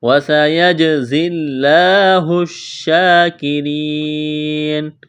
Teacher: جیم پر قلقلہ کریں گے، زا میں سیٹی کی آواز پیدا کریں گے، اس یا کو نہیں پڑھیں گے، لفظ اللہ کے نام سے پہلے زیر ہے، لفظ اللہ کے نام کو باریک کرنا ہے۔ · کاف اور را کو باریک کرنا ہے، یا مدہ ہے، الف کے برابر کھینچنا ہے۔ اس آیت پر جب وقف کریں گے نون کو ساکن کریں گے۔